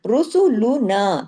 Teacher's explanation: रुसुलुना में रा को हैवी किसकी वजह से? पेश की वजह से। रुसुलुना, ना के साथ अलिफ है।